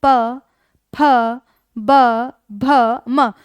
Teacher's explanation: जब दोनों होठ एक साथ मिलेंगे तब ही इनका उच्चारण किया जा सकता है। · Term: द्वयोष्ठ्य व्यंजन